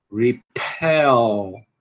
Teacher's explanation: Tem que aspirar, né? E tem que pronunciar o L aqui no final também